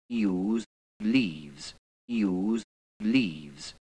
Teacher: some RP speakers did use relatively tense, pure E and OO.